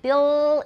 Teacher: bill is a dark l but i've still got alveolar contact